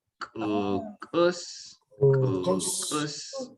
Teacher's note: all of these U's kind of got that creaky sound